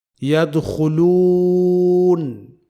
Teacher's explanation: یہاں یدخلون کے لام کو باریک پڑھا جائے گا، کیونکہ یہ لام لفظ اللہ کا لام نہیں ہے۔